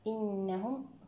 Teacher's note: إنهم هنا غنت النون المشددة أكمل ما تكون